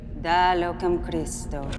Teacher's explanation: she also vacillates in trilling her r's with christo and terissime so she uses an english r there